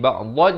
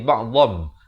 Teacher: Tapi bila datang ba, pada hukum iqlab kena tukar. Daripada bunyi nun kepada bunyi mim. Jadi ba'dhan jadi ba'dham.